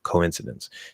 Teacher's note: It's coin. It's an O with a small W linking to I, the second vowel